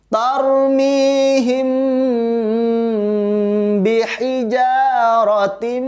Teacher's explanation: Rotim ditahan lagi karena ada idgham bi gunnah, yaitu tanwin bertemu dengan huruf mim.